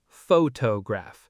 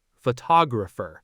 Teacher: Photograph stresses the first syllable, photograph, but photographer stresses the second